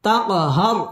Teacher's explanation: টেনে পড়তে হবে ফালা তাক কলকলা ধাক্কা দিয়ে পড়তে হবে তাকহার র পুর হবে এবং র এর মধ্যে ওয়াকফ করতে হবে